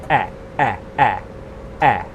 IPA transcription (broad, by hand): e